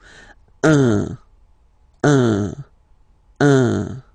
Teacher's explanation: So if you listen to me, you don't hear any N